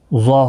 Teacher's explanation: ضا حروف مستعلیہ ہے، پر پڑھا جائے گا